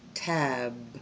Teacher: But if you say tap and tab, b is the same sound in that you do the same thing with your mouth, p, b. But the difference is on the b, you use your voice or your vocal cords.